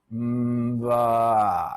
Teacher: Vocal cords start vibrating before the lips release for ba.